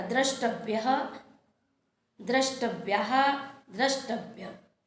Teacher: यह तालव्य श मूर्धन्य श में बदल जाता है और यह त जो है ट में बदल जाता है